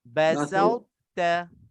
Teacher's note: Basa, lepas pada sa tu muncung sekejap, lepas tu ta terus.